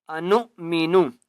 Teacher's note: نون حمزہ پیش نو واو کے پر حمزہ ہے نون کو جھٹکا دے کر پڑھیں گے